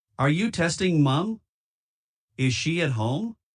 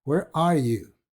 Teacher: las preguntas abiertas es decir esas que no se pueden contestar con un sí o no tienen una pronunciación descendente al final